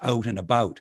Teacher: a function of how i move my mouth when forming the sounds that americans say as ow and i say as oo